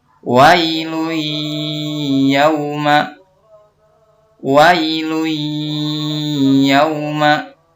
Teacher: Maka cara membacanya adalah meleburkan tanwin domah ke dalam huruf ya disertai dengan dengung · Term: idgham bigunah